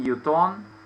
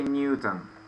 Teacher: English people they usually have the accent on the first syllable